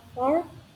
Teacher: huruf r sering kali menghasilkan suara vokal panjang a seperti a yang diperpanjang